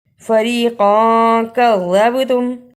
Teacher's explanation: اخفا بھی کیا اور با پہ قلقلہ بھی کیا